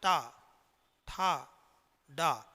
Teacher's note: प्रिय साथियों, आप कहिए टा, ठा, डा। देखिए आपकी जो जिह्वा है ये तालु के पीछे जाती है और तालु के पीछे का ये स्थान होता है मूर्धा।